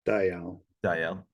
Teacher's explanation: two syllables with the emphasis on the L so it's Dayal not today they are got it you know